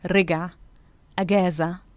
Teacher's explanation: in cairo and north of cairo it's pronounced ga in most of the southern parts of egypt it's pronounced ja